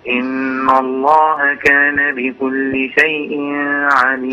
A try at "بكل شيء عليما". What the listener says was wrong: لا بكل شيء عليما في إظهار لا شيء عليم على طول ما توقفش على التنوين